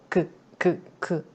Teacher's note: 여린 입천장 말랑말랑 한 부분과 혀의 뒤가 만나서 나는 소리입니다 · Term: 여린 입천장 소리